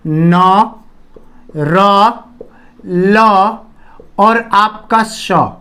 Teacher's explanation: ऐसे व्यंजन जिनका उच्चारण करते समय जो आपकी जीभ है वो किसको स्पर्श करे, मसूड़े को स्पर्श करती है। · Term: वर्ड्स व्यंजन